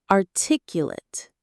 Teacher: When it's an adjective describing someone, the stress is on the 2nd syllable and the end sounds like it.